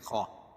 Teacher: خا کو موٹا پڑھیں گے اور زال کو باریک، کیوں کہ یہ حروف مستعلیہ میں سے ہے